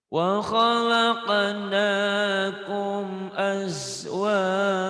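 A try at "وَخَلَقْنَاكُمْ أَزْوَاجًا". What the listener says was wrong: Ja jadi panjang mas. Azwaja jadi panjang. Diulang mas. Jangan as ya. Azwaja.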